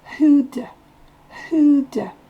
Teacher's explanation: Le do, ici on l'entend presque pas, il est presque de.